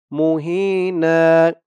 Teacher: ওকফ করার কারণে ২ জবর থেকে ১ জবর রিমুভ হয়ে গেছে। ১ জবর দিয়ে এই যে পাশে খালি আলিফ ধরে এক আলিফ টান দিয়ে পড়া হয়েছে। এটাকে বলে মদ্দে এওয়াজ।